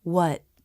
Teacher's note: the word what I don't release the tea at the end the tongue goes to the roof of the mouth but then I just stopped the air my teeth aren't together and I don't release the lips simply close what here's what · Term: stop T